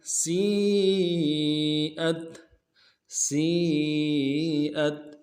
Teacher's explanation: سین کو یا کے ساتھ ملانا ہے، یا مدہ